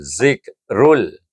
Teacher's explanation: Huruf lam adalah huruf idgham kamil yang diidghamkan padanya tanpa baca dengung